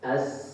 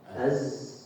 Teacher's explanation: Huruf sin dapat dibedakan dari huruf zai dengan sifat al-hams.